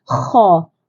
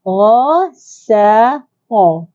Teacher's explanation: Kha ni macam kita hembus. Kha. Ra ni kita tak perlu hembus. Walaupun makhrajnya sama di hujung kerongkong, tapi masih ada perbezaan.